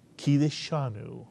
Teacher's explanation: The accent is on the disha